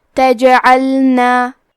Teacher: جیم بھی حروف القلقلہ میں سے ہے تو ہم یہ حرف کو ہلاتے ہوئے یہ کلمہ کو پڑھیں گے